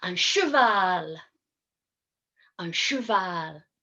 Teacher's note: Here our sound is a C and a H together, making a sh sound, not a ch sound, but a soft sh sound. So cheval, cheval.